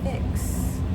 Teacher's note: We don't feel a vibration with the X sound. Fix. Voiceless.